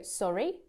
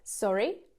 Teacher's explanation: if we can't hear or can't understand what someone is saying make sure you focus on the intonation we want to go sorry down up down up